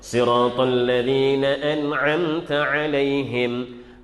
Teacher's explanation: nun bertemu dengan ain. Baris itu adalah tak dengung.